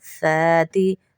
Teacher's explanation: سا ہے، سین نہیں ہے، سیٹی سے بچائیے گا